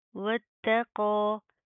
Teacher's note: تا باریک اور قاف موٹا